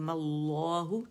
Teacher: अच्छा, फिर हमने क्या करना है कि लाम को हमने क्या करना है, 6 काउंट्स, मीम का गुन्ना देना है, फिर मीम को अगेन 6 काउंट्स, और फिर हम सांस आवाज़ नहीं तोड़ेंगे, कोई पॉज नहीं आएगा, बल्कि हमने क्या करना है, मीम को हमने इस्मुल जलाला जो है उससे मिलाना है मोटाई के साथ